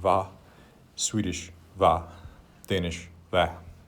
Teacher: And then in Norwegian Nynorsk, based on the sound that you hear in many Western Norwegian dialects, you get kva. But then in East Norse, mostly that is reduced to just a V sound without any preceding consonant sound